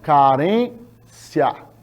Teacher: Eu tenho a vogal I pronunciada de maneira bem baixinha. E a vogal A mais forte. Então, e elas estão na mesma sílaba. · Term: ditongo